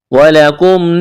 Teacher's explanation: وَلَكُمْ واو اور لام اس کو جلدی پڑھنا ہے بغیر کینچ کے. کاف کو میم کے ساتھ ملائیں گے.